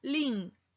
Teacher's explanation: U y I, vocales cerradas diferentes, y forman una sola sílaba